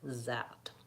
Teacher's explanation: my tongue is behind my teeth not pushing but down and it sounds more like a Z